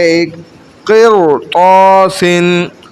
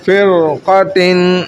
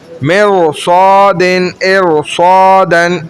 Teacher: را ساکن ہے اس سے پہلے زیر ہے لیکن بعد میں چونکہ حرف مستعلیہ آ گئی تو یہ قانون ہے کہ اس کو موٹا پڑھیں گے